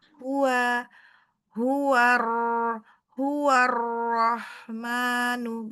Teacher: Haknya ditipiskan, jangan terpengaruh dengan ro.